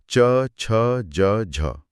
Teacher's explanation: जब च बोला जाता है तो जीभ तालू को छूती तो है यानी स्पर्श करती है। लेकिन जब वो वहां से हटती है तो वो ट की तरह एकदम झटके से नहीं हटती। · वो थोड़ी देर वहां टिकती है और हवा एक बहुत ही पतले से रास्ते से रगड़ खाती हुई संघर्ष करती हुई एक प्रवाह के साथ बाहर निकलती है। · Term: स्पर्श, संघर्षी